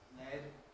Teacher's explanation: If you make an L sound, lead, and suck in, you should feel cold at the side, because it's a lateral.